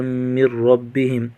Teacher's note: ھدی من ربہم تنوین کو میم کے ساتھ ملا کر ہونا کریں گے۔ من ربہم میم کو را کے ساتھ ملا کر پڑھیں گے۔ نون ساکن کا غنہ نہیں ہوگا، میم ساکن کا بھی غنہ نہیں ہوگا۔